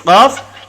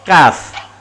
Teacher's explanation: Qaf dengan kaf berhampiran. Qaf di pangkal lisan, kaf naik sikit. Sama-sama pangkal lisan naik sikit.